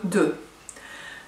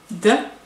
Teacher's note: c'est une dentale et la langue vient contre vos dents